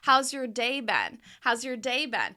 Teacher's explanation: And the stress is going to be on day.